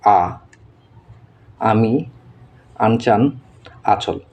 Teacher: জিভ নিচু থাকে। আ আমরা যখন আ করি জিভ হচ্ছে একবারে নিচের দিকে থাকে এবং মাঝখান বরাবর থাকে, নিচের দিকে থাকে আর এইদিকে হচ্ছে মাঝখানে থাকে।